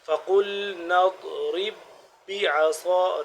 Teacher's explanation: ضاد کا مخرج آپ کو بتایا تھا کہ زبان کی کروٹ کو اوپر والے جو داڑ ہیں ان کے ساتھ لگائیں گے تو ضاد صحیح طرح سے ادا ہوگا